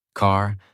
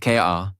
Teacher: It is fully pronounced. Your tongue moves slightly back. Your mouth stays relaxed and the sound comes from inside not from the lips. · In American English, the R sound is strong and clear. It is not silent. It is not weak. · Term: American R sound